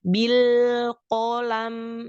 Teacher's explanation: karena lam sukun punya sifat bainiyah atau tawasud, maka sedikit alirkan dan sedikit ditahan. Tidak boleh langsung dilepas.